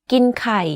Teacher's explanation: The first word of this sentence, ก ิ น or eat, is in middle tone, but the last word, ไ ข ่ or eggs, is in low tone. You can hear that my pitch went slightly lower at the end of this sentence.